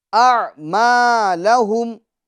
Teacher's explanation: میم میں الف مدہ ہوگا یعنی ایک الف کی مقدار اس کو ہم کھینچیں گے